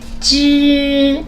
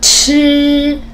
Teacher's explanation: When you say 知 there's no air comes out of your mouth. When you say 吃 you can move this paper. 吃 do you see the air?